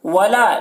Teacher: لام الف مدہ ہے، اسے ایک الف کے برابر کھینچیں گے